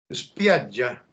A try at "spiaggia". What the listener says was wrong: Sí, menos i al final. Ya, entonces lo que yo estoy haciendo aquí es spia, freno, ya. Spiaggia. Una doble dura. Spiaggia.